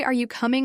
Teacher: if you say, Are you coming? with a falling tone, it sounds like you're confirming something, not actually asking.